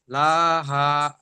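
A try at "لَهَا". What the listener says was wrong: হা টান হবে, লাহা।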